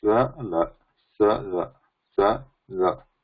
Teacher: When we say sa, there is little gap compared to ta, a gap or degree of touch is reduced a little bit. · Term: Ishat Sprushta